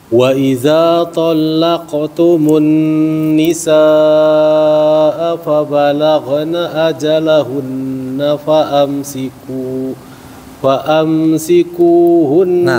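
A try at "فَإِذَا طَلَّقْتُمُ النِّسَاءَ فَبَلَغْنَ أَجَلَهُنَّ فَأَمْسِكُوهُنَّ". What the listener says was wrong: Nah, itu berhenti di situ sebenarnya nggak boleh. Ya, kalau berhenti di hunna, fa amsikuhun. Tapi tadi masuknya ke waqaf terpaksa. Waktu qabih sebenarnya qabih dia. Tapi kan terpaksa. Terpaksa itu waqaf terpaksa. Harus sama fa amsikuhun. Baru mulai dari fa amsikuhunna.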